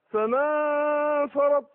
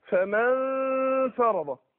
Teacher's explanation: يبقى اللي بين الميم والفاء غنة ليس الا، مش النون